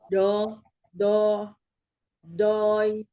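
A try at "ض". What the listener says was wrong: Rongga mulut tetap dibuka untuk huruf yang tebalnya, bukan do, tapi bo, mahal huruf bod, sisi lidah menyentuh geraham ya, geraham atas, sisi lidah kiri menyentuh geraham kiri, itu lebih mudahnya. Kalau belum mampu untuk dua-duanya ya, salah satu saja boleh sisi lidah sebelah kiri menyentuh gigi geraham kiri atas. Bo, ya, ro tebal, bo tebal, ya lain.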